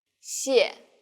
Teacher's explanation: The tone in the first syllable is the fourth falling tone. 谢. And the second syllable is the neutral tone.